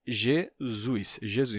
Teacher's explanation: E o S intervocálico se sonoriza. Então, você vai ter Jesus, Jesus.